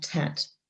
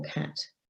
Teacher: So that's where you might have tat for cat, for example. Okay, so children are using a t to replace the k in this instance